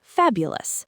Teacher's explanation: The stress is on fab, so the ending is uless. Fabulous. The OUS part is always weak.